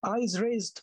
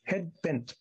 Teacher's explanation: a foot of two syllables but both of them stressed